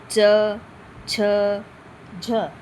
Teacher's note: कुछ होते हैं स्पर्श संघर्षी वर्ण जिसे बोलने में बहुत ज्यादा समय लगता है।